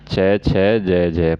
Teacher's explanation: च वर्ण में आपकी जीभ है स्पर्श हो रही है और संघर्ष भी लग रहा है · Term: स्पर्शी संघर्षी व्यंजन